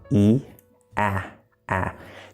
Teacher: In real speech, you'll notice I'm sort of pulling the sides of my mouth out, just like for e, ah, ah. The only difference is that my mouth is more open, so it creates this sort of shape like this.